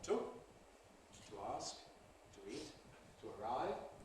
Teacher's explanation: ‘to’ has its prevocalic weak form /tu/ · To has its prevocalic weak form, to ask, to eat, to arrive, which can then compress to twa.